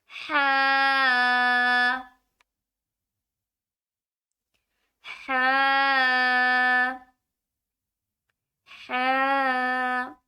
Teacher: ہا کو گلے کے حلق والے حصے سے ادا کیا جائے گا